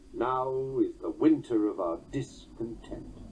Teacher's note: The opening line of Shakespeare's Richard III has a demoted third beat. Note that the first foot begins with a Trochaic substitution.